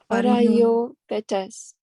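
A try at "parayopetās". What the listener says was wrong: Petas. It is. It's a soft T. this is a soft T, not a hard T. Petas.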